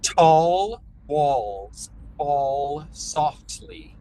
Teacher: Right now, especially, I'm noticing the A when it's connected to an L is wanting to drop into the throat a little bit, and the sound gets a little bit muted, muffled, or swallowed sounding.